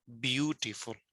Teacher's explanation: stress on one syllable and more than other beautiful beautiful so we are giving stress at the start part beautiful okay if we cannot say beautiful okay stress is on